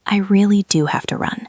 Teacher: The emphasis is on run.